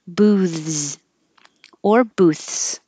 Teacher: your tongue is going to be between the teeth with airflow for the th and then you have to pull it back in for the Z but don't lose your airflow keep air going the whole time booze or booths voiceless booths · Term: th Z combination, TH-Z combination